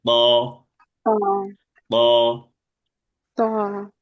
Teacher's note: মোটা আওয়াজে ত। এক আলিফ টেনে পড়তে হবে।